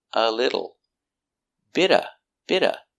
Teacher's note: the T in little changes to a D because it's between vowels phonetically.